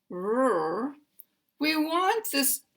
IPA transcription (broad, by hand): ɹ